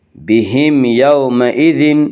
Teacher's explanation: بہم یومئذ میں اظہار شفوی ہوگا، اس کا قاعدہ ہے کہ میم ساکن کے بعد میم اور با کے علاوہ کوئی اور حرف آئے تو وہاں پہ اظہار شفوی ہوگا، یعنی میم کو ظاہر کر کے پڑھیں گے